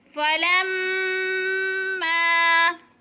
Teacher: فلما پہ مد ہو رہی ہے، 5 حرکات کے برابر کھینچ کر میم مشدد سختی کے ساتھ